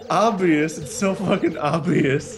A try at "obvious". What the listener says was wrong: Are you pronouncing the B?